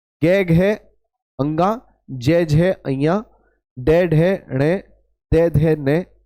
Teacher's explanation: हुए आपके तीसरी वाली लाइन चौथी और पांचवी इन्हें कहते हैं सघोष यानी इनके बोलने में कंपन होती है स्वर यंत्री में